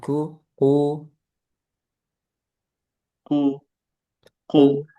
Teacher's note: Qof-nya jangan ada udara. Ku u ku ke belakang lagi pangkal lidahnya.